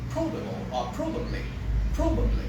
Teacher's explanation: the stress is on the first syllable you will say probable or probably probably and then capable you